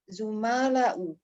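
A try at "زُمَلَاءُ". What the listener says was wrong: aywa, zumala'u ya. Zamilun, fu'ala'u, zumala'u. Aywa. Nah, ahsanti.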